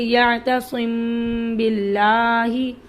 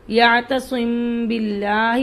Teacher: اگر میم ساکن کے بعد با ہے تو وہاں غنہ کے ساتھ اخفا ہوگا، اور اس اخفا کا مطلب یہ ہے کہ اس میم کو ادا کرنے کے وقت دونوں ہونٹوں کے خشکی کے حصے کو بہت نرمی کے ساتھ ملا کر غنہ کی صفت کو 1 الف کے برابر خشوم سے ادا کیا جائے گا، اور پھر اس کے بعد ہونٹوں کے کھلنے سے پہلے ہی دونوں ہونٹوں کی تری کو سختی سے ملا کر با کو ادا کیا جائے گا، جیسے یعتصم باللہ۔ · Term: اخفائے شفوی